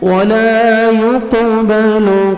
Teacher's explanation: ولا الف مدہ 1 سیکنڈ لام کو کھینچنا ہے ولا يقبل قاف حروف قلقلہ میں سے ڈبل ساؤنڈ آئے گا